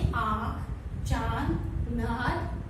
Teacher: इसके उच्चारण के समय हवा नाक तथा मुख दोनों से दबाव के साथ बाहर निकलती है। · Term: अनुनासिक